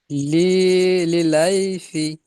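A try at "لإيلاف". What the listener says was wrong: লিলাই কেন? লি ই লাফি, লাই নয়, লি ই লাফি। লাউ নয়, লি ই লাফি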